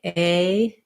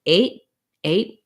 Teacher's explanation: even if i don't release the t i'm gonna have my tongue go up to make the t and no air is going to come out so you want to make sure that that vowel is short